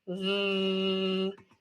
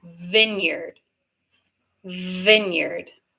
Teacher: your top teeth on your bottom lip. So VV and that's with voice. You want to make sure your voice box your your vocal cords are coming together and vibrating to make the VV sound, right?